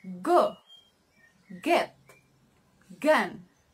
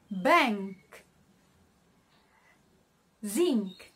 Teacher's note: sounds are made by raising the back of the tongue towards the soft palate or velum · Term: velar